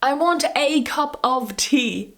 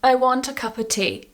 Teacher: a and of are both pronounced the same way they're both pronounced as uh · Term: weak form